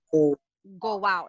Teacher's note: there is a wa sound in between of go and out